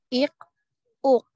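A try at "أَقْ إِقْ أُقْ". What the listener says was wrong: Nah, ini belum qalqalah, belum memantul. Harus dipantulkan. Ako.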